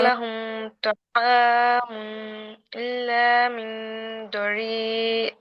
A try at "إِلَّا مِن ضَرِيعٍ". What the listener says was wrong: আপুর মিন হয়ে যাচ্ছে উচ্চারণটা, আমি জানি না, আমার কাছে মিন উচ্চারণটা আসতেছে। মিং, মিং।